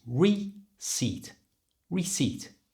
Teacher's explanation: just don't pronounce the P, it's silent, and then split it into two. So it's re, and to get that good British R sound, push your lips forward, re, and the second part is simply seat, like what you sit on, seat.